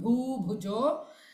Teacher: both the ba are bhu, dirgha bhu and bhu, both the bhu are mahapranas